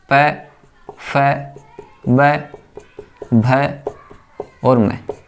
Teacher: उच्चारण स्थान है होटों से होता है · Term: ओस्ट